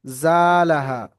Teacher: আলিফ মাদ্দাকে এক আলিফ পরিমাণ টান দিয়ে পড়তে হবে